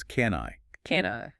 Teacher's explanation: The N connects directly to the I, so it becomes can I. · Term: links together seamlessly